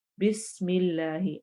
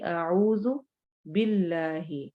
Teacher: مثلا بسم اللہ، اس میں کیا ہے، میم کے نیچے کسرہ ہے، زیر ہے، اس لیے ہم اللہ والے لام کو باریک پڑھ رہے ہیں